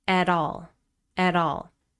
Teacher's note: Listen to that connected speech. At all. At all. It sounds like one word.